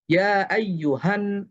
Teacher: হা সরাসরি নুনকে ধরবে কারণ এটা হামজাতুল ওয়াসল।